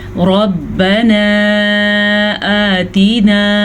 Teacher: را کو پر پڑھیں، را کے اوپر زبر ہے، یہ چھوٹی مد ہے، اس کی مقدار تقریباً 2.5 حرکات عربیہ ہے، یعنی کہ 2 سے 2.5 سیکنڈ تک ہم اس کو لمبا کریں گے۔